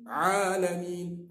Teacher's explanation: Cuba sebut kita akan merasa tengah-tengah halak ni. Di tengah-tengah halqum. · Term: Ain huruf tawassut